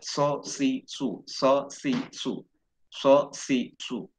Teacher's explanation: Ada angin-angin keluar dari celah-celah gigi bawah. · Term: sod